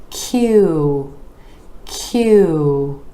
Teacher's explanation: out for this sound so we're going from the consonant or the back of the tongue rises up to the palate and then the lips are moving forward